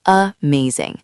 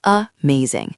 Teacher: Most students say amazing, but a native speaker says amazing. That first A is a schwa.